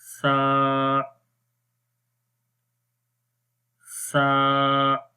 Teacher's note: زبان کی نوک کو اوپر والے دانتوں کے کناروں پر لگائیں گے جو سامنے والے دانت ہیں, تو اس وقت سا حرف پڑھا جاتا ہے اور اس کی آواز نرم رہتی ہے.